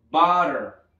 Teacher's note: vean cómo esta doble T pasa a ser una R